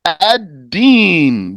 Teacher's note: You don't pronounce the lamb. You don't say Al-Din.